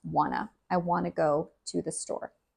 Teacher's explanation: You don't hear the t in that word. The t gets taken out and combined together. It is just wanna.